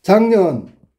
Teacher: 작년 이렇게 발음됐으니까 기억이 이응으로 바뀌었네. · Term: 자음동화